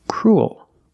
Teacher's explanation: when you make the dark L, the mouth opens a little bit. So when you link those sounds, when the mouth opens a little bit, you get a little bit of an extra sound, but it's not uh it's not an extra vowel.